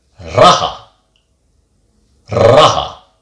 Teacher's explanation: Just one R, and the R isn't too long, it just goes raha.